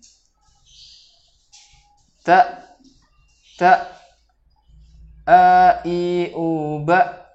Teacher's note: langsung ketika huruf hamzah ini pita suara tertutup, maka huruf hamzah ini akan terbaca dengan sempurna